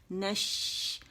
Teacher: اور جب زبان کا درمیانی حصہ اوپر غار کے قریب ہو جاتا ہے، بلکہ اس کا بھی درمیانی حصہ، ٹھیک ہے. نش، تو ہوا منہ کے اندر پھیلتی ہے اور شاورنگ ساؤنڈ کو پروڈیوس کرتی ہے